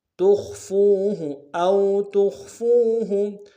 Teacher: تا کو خا کے سامنے لانا ہے، خا کو موٹا ادا کریں گے۔ فا کو واو کے سامنے لانا ہے، واو مدہ ایک دال میں کھینچیں گے۔ · یحا میں ہا کے ساتھ الف مدہ ایک دال میں کھینچیں گے، ہا کو ہرائی سے ادا کریں گے۔ سین کو با کے سامنے لانا ہے، با حرف قلقلہ میں سے قلقلہ کریں گے، با کاف کو میم ساکن کے سامنے لانا ہے، غنہ کریں گے۔